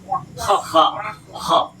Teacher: kalau Kha berdahak di tenggorokan